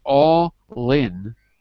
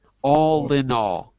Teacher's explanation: you can say the l if you connect it to the in